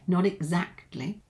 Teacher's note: there might be a little linking here because you've got the T linked to the vowel sound of E